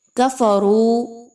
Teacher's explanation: را کو پر پڑھا جائے گا اور واو مدہ ہے تو 1 سے 2 الف کے برابر اس کی ادائیگی رکھی جائے گی.